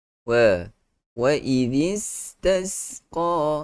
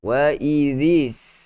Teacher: huruf zal yang keluarnya pada hujung lidah campur masuk ke dalam huruf sin, yang mana lidah itu mesti kita sorokkan semula. Dia tidak boleh wa idhis sama makhraj, tapi patutnya wa idhis this.